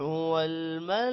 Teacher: والملائکۃ لا کھڑی زبر اور مد کی وجہ سے لمبا کریں گے